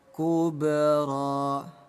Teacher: Bunyi ba kita pantulkan hukum qalqalah.